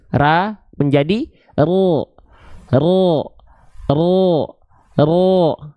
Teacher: buka mulut dulu ra ra ra vokalnya masih A kan ingat vokal o-nya enggak boleh monyong ro enggak tapi buka mulut ra biarkan dia keluar dengan vokal